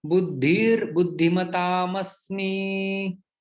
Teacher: यहाँ पर विसर्ग का रेप में परिवर्तन हो जाता है